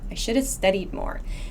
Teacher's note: So this should have sounds like shoulda. Shoulda. It's like we put an A at the end of should.